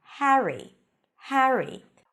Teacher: name Harry or Harry could be pronounced in two different ways in British English it's more of an a sound before an R